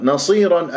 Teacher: من غير ان اميل الالف حتى يكون الصوت غير مستتر نصيرا النون مرقق الصاد مفخمه من احرف الاستعلام مكسوره